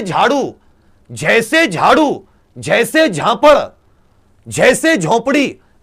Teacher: तालव्य, महाप्राण, घोष व्यंजन